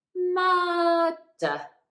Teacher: after that first R letter, the next sound is D, which is a consonant. So we don't pronounce that first R. Then in the second syllable, the next sound after that R in that syllable is nothing.